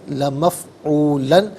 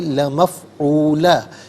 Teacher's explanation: کیونکہ 2 زبر کی تنوین وقف میں الف سے چینج ہو جاتی ہے۔ ان کان وعد ربنا لمفعولا، یہاں وقف ہوگا تو لمفعولا پڑھیں گے۔